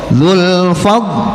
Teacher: jangan dipantulkan qalqalahnya, tidak ada qalqalah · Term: huruf dhad